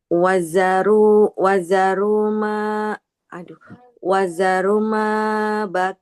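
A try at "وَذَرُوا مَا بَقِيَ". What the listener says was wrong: Wazaru. Roknya panjang dulu. Rok dhammah ketemu wawu, maka harus panjang.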